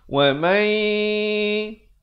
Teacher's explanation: hukumnya idgham bi gunnah. Apa maksudnya? Masuk beserta dengung dua harakat.